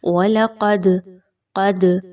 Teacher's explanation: دال کے اوپر جزم کی علامت ہے، دال حروف قلقلہ میں سے ہے، جی ہاں آپ نے یہاں پر جزم کی علامت آ گئی تو دال کو تھوڑا سا ہلا کر پڑھنا ہے۔